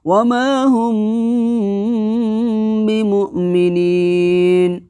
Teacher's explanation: ترمیہم بحجارۃ وما ہم بمؤمنین، واو زبر وا، میم الف زبر ما، وما، ہا میم پیش ہم، وما ہم، اخفاء شفوی ہوگا اس لیے کہ میم ساکن کے بعد با آئی، اس لیے اخفاء شفوی ہوگا۔ میم ساکن کی آواز کو ناک میں چھپا کر کے اخفاء کے ساتھ ادا کریں گے